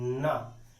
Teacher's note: जब आप ना बोलते हैं तो ना बोलते समय पहले नाक की झनकार निकलती है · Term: अनुनासिक